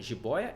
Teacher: paroxítona jiboia é paroxítona a paroxítona eu vou te lembrar que a sílaba tônica não é a última é a penúltima